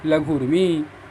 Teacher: लघु, धन, उर्मी, लघुर्मी। ऊ और ऊ ह्रस्व ऊ है और ह्रस्व ऊ है, दोनों मिलकर के दीर्घ ऊ हो गया।